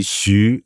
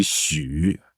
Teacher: Xu, second tone, or it could be Xu, third tone